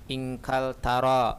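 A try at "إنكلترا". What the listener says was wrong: Inkaltara, ada tasdidnya.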